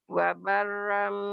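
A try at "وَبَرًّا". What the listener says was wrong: Wabarrom, rom, jangan wabaram ya.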